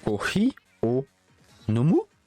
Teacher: en style neutre, c'est comme en français, quand tu poses une question, tu montes.